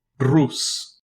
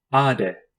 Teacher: It is a voiced dental stop, pronounced like the D in day, but with the tongue against the back of the teeth.